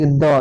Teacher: द किस से आ रहा है दंत से आ रहा है